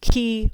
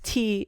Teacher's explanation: Key versus T is a difference in place of articulation